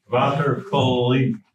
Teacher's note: we pronounce it the way they pronounced it in the 17th century with an epithetic vowel